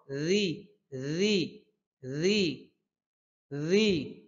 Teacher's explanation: তাকযিবুন রাল পাতলা হরফ।